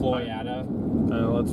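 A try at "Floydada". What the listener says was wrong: It's Floyd Data. There's definitely data at the end of it.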